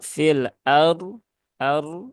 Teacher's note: RO itu di sini rnya tebal ya karena berhubungan dengan fathah